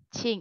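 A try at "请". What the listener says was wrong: Oh, itu jadi nada satu. Kalau ching, itu jadi nada satu.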